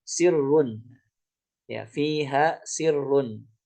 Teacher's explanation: Maka di sini kayaknya lebih cocok dia itu berhubungan sama sifat, ya. Karena kita tidak menjaga sifat isti'ala ataupun tafkhim daripada huruf shad sehingga dia berubah menjadi sin.